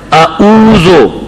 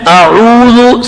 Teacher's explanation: عین کو حلق کے درمیان میں پڑھیں گے. اگر عین کو آپ نے حلق کے جڑ سے نکالا تو پھر حمزہ اور عین میں فرق نہیں ہوگا.